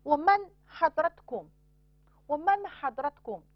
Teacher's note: 这个▁nun▁后边有一个喉音，所以要显读